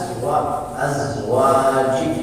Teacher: za dalam pengucapannya itu sangat lembut. Dia tidak hames walaupun bersanding dengan sin dan shad.